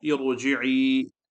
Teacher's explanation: Heavy letter means khussa ضغط قذ, read with the full mouth. After kasra, ra sakin, temporary, read heavy with a full mouth. Temporary, basically the kasra is temporary there.